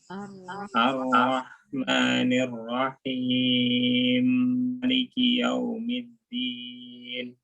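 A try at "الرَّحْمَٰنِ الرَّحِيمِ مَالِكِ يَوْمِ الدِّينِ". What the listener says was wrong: Berapa harokat himnya? 6. Oke, kurang panjang Ustaz tadi. Ulang.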